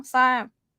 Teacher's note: Dead syllable, long vowel, so it's falling tone.